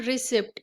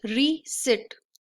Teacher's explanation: तो that is not रिसिप्ट, it is रीसिट। The पी is silent over here, okay? सो the correct pronunciation is रीसिट।